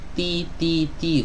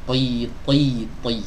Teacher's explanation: Huruf to ingat dia tebal di setiap keadaannya, jadi ketika di kasroh dia tetap tebal. Beda dengan huruf ta.